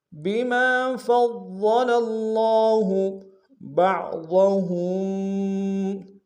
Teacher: على النساء بما فضل الله، بما میں باق نون سے ادا کریں گے، میم کی سالف مدہ ایک انداز میں کھینچیں گے۔ فا کو ضاد کے سامنے لانا ہے، ضاد کے اوپر تشدید زور دیں گے، اور ضاد کو موٹا ادا کریں گے۔